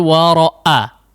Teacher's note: pita suaranya betul-betul dirapatkan, ditutupkan sebelum dibuka ya. Sehingga betul-betul titik daripada makhraj huruf hamzahnya terdengar jelas ya.